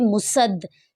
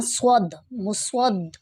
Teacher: یہاں پر سواد کی ہی آواز نکالیں گے، سین کی آواز یہاں پر بالکل بھی محسوس نہ ہو، جس طرح کے مسد سین، یہ سین محسوس ہو رہا ہے، اس طرح سے نہیں پڑھنا۔